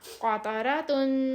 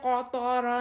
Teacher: 2 موٹے حروف کے درمیان ایک باریک سافٹ سی تا پھنسی ہوئی ہے، اس کو ہم نے تا کو موٹا نہیں پڑھنا، ہم نے قطارا نہیں کہنا، نہیں تو تو بن جائے گی، یہ تا کہنا ہے۔